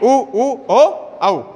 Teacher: वृत्ताकार या वृत्तमुखी। ऐसे स्वर जिनका उच्चारण करते समय हमारे होठ गोल हो जाते हैं, वृत्ताकार या वृत्तमुखी स्वर कहलाते हैं।